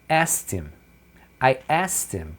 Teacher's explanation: ele tira o H do him e ele tira o K do asked